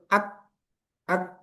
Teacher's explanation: kaf itu suaranya tertahan. Misalnya kita sukun itu ak ak ak itu macet kan? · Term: syiddah